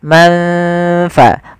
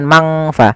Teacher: Maka samarkan ke huruf fa, manfa, bukan mangfa. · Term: ikhfa